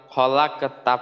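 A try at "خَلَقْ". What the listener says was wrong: আচ্ছা, কলকলাটা কিন্তু হইল না। খলাক, এই আওয়াজটা কিন্তু দুবার করতে হবে। আচ্ছা, এইখানে খলাক তু, খলাক লাক, এইভাবে আওয়াজটাকে একটা পাল্টা পাল্টা আওয়াজ করতে পারে। খলাক তু।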